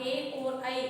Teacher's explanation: ए और ऐ इन दो वर्णों का उच्चारण हम कंठ और तालु की सहायता से करते हैं। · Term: कंठ, तालु